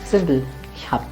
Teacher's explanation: Its sound is always going to be B, but there's one thing that you have to remember and pay attention to. Whenever B comes at the end of a word or a syllable, its pronunciation is going to change to P. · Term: Auslautsverhärtung